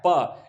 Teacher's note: कहां से होता है, होठों से होता है। जैसे बोलेंगे प तो दोनों होठों को मिलाना पड़ता है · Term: ओष्ठ